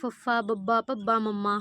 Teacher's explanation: ਅੱਖਰ ਹ ਪ੍ਰੋਨਾਊਂਸ ਹੁੰਦਾ ਦੇਖੋ ਜਿਵੇਂ ਤੁਸੀਂ ਬੋਲ ਕੇ ਦੇਖੋਗੇ ਪਪ ਤਾਂ ਤੁਹਾਨੂੰ ਲੱਗੂਗਾ ਕਿ ਜਿਹੜੇ ਦੋਨੋਂ ਬੁੱਲ ਨੇ ਆਪਸ ਦੇ ਵਿੱਚ ਜੁੜ ਰਹੇ ਨੇ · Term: ਹੋਠੀ ਧੁਨੀਆਂ